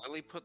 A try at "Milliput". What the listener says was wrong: It's not Lily.